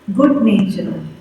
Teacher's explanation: you're stressing on the second syllable